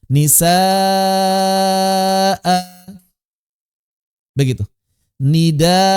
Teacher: Maka saat wakaf, an diubah menjadi a secara suara. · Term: mad iwad